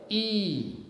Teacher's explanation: when you speak the sound E, you know, your tongue comes forward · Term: front vowels